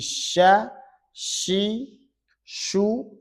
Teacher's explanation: sya tengah lidah dengan tengah langit-langit